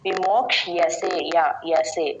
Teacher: విమోక్షసే లాగా కాకుండా క్ష కి య వత్తు వినపడాలి